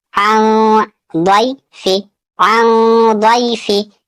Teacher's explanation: नून साकिन के बाद द्वाद है, यहाँ भी इख्फा होगा।